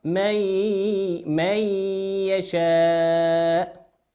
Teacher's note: النون في من هي نون ساكنة أتى بعدها حرف الياء، والياء من حروف الإدغام بغنة، يغن بمقدار حركتين